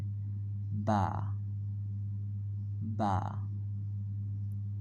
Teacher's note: দুই ঠোঁট একসাথে মিশে উচ্চারিত হবে